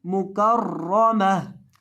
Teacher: मीम जबर म, मुकर्रमा, मुकर्रमा, ता दो दे तिन, मुकर्रमातिन। और वक़फ़ की हालत में गोल ता को साकिन हा से बदल देंगे।